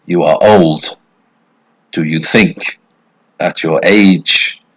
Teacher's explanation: two unstressed followed by a stressed an anapestic meter · It's two unstressed syllables followed by a stressed syllable, and that's the foot. Two unstressed followed by a stressed. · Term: anapaestic meter